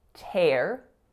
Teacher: So that's an aspirated T sound going into a complex R vowel, air.